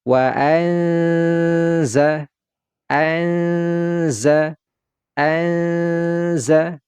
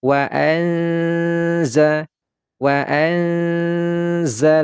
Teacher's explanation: di sini ada terjadi gunnah, ya, dia ditahan terlebih dahulu.